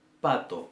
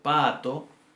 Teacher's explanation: la primera A de pato y la segunda A de pato son distintas, una es más larga que la otra, la segunda tiene un tono que sube y un tono que baja